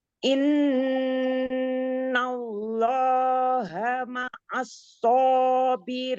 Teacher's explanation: nun musaddadah dibacanya termaksud guna akmal matakun jadi sempurna dibaca 3 ketukan